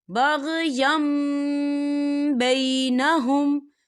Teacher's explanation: ما جاءتهم البینات بغیم بینہم، یا دیکھیں بغیم، یا کے پر تنوین ہے اور تنوین کے بعد با آ رہا ہے، تو یہاں پر اقلاب ہوگا، یعنی تبدیلی ہوگی، ہم یا کو جو ہے میم کے ساتھ ملا کر پڑھیں گے، اور یہاں پر غنہ بھی ہوگا۔